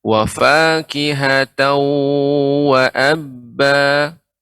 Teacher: Ya, dengan cara dimonyongkan Ibu ketika menjumpai idgham bi gunna dengan waw wa fakihatau disertai dengan monyong bibirnya wa fakihatau wa abba.